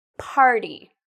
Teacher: part is louder TA is shorter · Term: stress